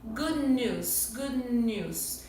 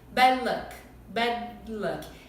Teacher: Dependendo do que se segue desse D, a gente não vai liberar esse ar. É como se a gente pronunciasse o D até a metade. Só juntar a língua no céu da boca. Exemplos disso.